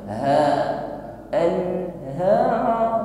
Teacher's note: huruf ha keluar dari makhraj aqsal halqi, ha suaranya gema